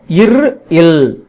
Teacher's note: இவை மேல்வாயை நாக்கின் நுனி தடவதனால் பிறக்கின்றன